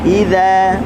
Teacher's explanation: huruf dzal hujung lidah di hujung gigi atas. Idza, okey, buka mulut.